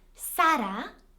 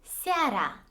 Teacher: Only a is a full vowel, which means that as the prominent sound, it is going to be pronounced fully, whereas e is a semi-vowel. That is why you can hardly hear it, and it is so faint.